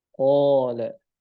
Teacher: Alifnya jadi tebal, ikut huruf qaf.